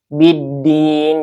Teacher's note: Dibacanya langsung diidghamkan ke huruf dal ya. Biddin, jadi lamnya tidak terdengar atau tidak dibaca ya, langsung ke huruf dal. Biddin, din ini ada mad aridlis sukun, yaitu mad tabi'i bertemu dengan sukun. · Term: alif lam syamsiyah